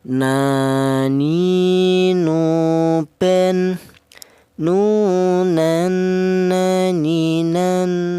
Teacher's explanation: huruf nun keluarnya huruf berasal dari ujung lidah menyentuh langit-langit mulut